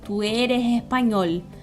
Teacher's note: Às vezes o S pode soar como um R, o que eles chamam de S aspirado